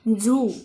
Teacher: double O म्हणजे दुसरा उ दीर्घ उ आहे आणि एन म्हणजे न म अधिक उ अधिक न मून इथे उन असा दीर्घ उच्चार होतो